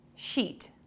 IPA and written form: ʃit (SHEET)